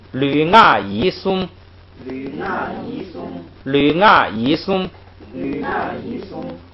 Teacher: 这个三音节的词怎么读呢？是前头两个当双音节读，最后一个单独读 ，所以是吕啊乙这样来读。然后松呢是数词，是给整个词加的，是单独读。吕啊乙松，吕啊乙松，吕啊乙松，吕啊乙松，比喻▁Sarah，比喻▁Sarah，比喻▁Sarah，比喻▁Sarah，却来马囧，却来马囧，却来马囧，却来马囧，吕啊乙松，比喻▁Sarah，吕啊乙松，比喻▁Sarah，吕啊乙松，比喻▁Sarah，吕啊乙松，比喻▁Sarah，却来马囧，却来马囧，却来马囧，却来马囧，连起来试一下啊。吕啊乙松，比喻▁Sarah，▁却来马囧。吕啊乙松，比喻▁Sarah，▁却来马囧。不错。再学一句哈，再学一句啊。紧巴亲包，紧巴亲